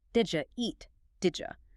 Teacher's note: In fast speech, the D and Y blend.